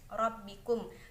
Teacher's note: Rabbikum, terdapat bacaan ra tafhim dikarenakan adanya huruf ra yang berharokat fathah maka ra-nya dibaca tebal